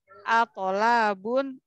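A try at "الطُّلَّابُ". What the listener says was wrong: atul ya, pakai tu, pakai dhammah. Ayo, atulabun.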